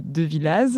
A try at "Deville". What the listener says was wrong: Alors, on va dire Deville. C'est écrit Devillaz, on ne prononce pas le Az.